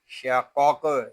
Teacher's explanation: इसको तुम ऐसे नहीं पढ़ेंगे, इसको पढ़ेंगे सुम मीम ज़बर मा, सुम्मा शीन ज़बर शा, क़ाफ़ क़ाफ़ ज़बर क़ाक़, शाक़ाक़, यहाँ क़ाफ़ पुर है और ये हरफ़ कलकला में से भी है, इसको पुर भी पढ़ेंगे और इसमें कलकला भी करेंगे